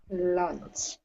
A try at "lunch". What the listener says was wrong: Yes, don't add the extra vowel sound. You got to be careful of that. I know that in Hangul, it's lunchi. You got to be careful with that, right?